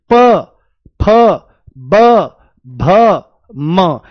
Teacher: यानी कि दोनों होठ आपस में लगते हैं। वायु यहां पर स्पर्श करती है तभी। · प वर्ग का उच्चारण होठों से ही होता है। देखो कैसे? प फ ब भ म यानी कि दोनों होठ आपस में लगते हैं। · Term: ओष्ठ